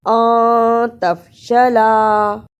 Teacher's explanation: نون ساکن کی آواز کو تھوڑی دیر ناک میں چھپا کر غنہ کرنا ہے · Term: اخفا